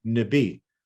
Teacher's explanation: So even Nibi, a 2-syllable word like water, Nibi, we see it rise at the end. There's a pitch raise